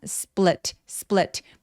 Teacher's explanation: split 발음할 때 s뒤에 오는 소리라서 살짝 된 소리가 납니다. split스 split 물론 split 해도 돼요. · S 뒤에 오는 P 소리라서 살짝 된 소리가 납니다